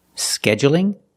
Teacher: you can say scheduling with the stress on the first syllable